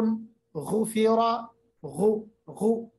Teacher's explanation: غین کو تھوڑا خراش کے ساتھ ادا کرنا ہے، موٹا ادا کرنا ہے